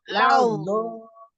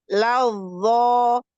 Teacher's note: belakangnya pangkal lidah diangkat sama suaranya ditutup